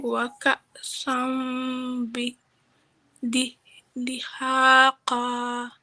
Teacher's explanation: Okay, so now this is this one we were talking about where we have our double tanween and it's slanted like this to let us know that we're not going to pronounce the noon, but we're going to hold it in our nose. And again, you have the feta followed by aleph, so it's 2 counts.